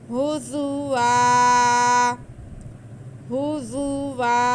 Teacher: ज़ा को हम सीटी की आवाज़ के साथ पढ़ेंगे और हम यहाँ पे वक्फ करेंगे, तो वाव पे 2 ज़बर हैं, उनमें से एक को ख़त्म करके तो पढ़ लेंगे तो हमारा वक्फ हो जाएगा।